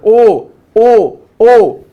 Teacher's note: कंठोष्ठ म्हणजे कंठ, कंठातून सरळ बाहेर येत आहे ओ, आणि ओठांचा सुद्धा वापर होतो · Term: कंठोष्ठ वर्ण